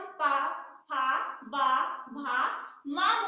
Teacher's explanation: आपको रटने की जरूरत नहीं है दोस्तों, आप जो है एकदम ट्रिक से अच्छे से याद कर सकते हैं, प्रैक्टिकली करके याद कर सकते हैं कि जब हम पा, फा, बा, भा, मा बोल रहे हैं तो हमारा ओठ दोनों आपस में मिल रहे हैं, इसलिए इनका उच्चारण स्थान ओष्ठ रखा गया है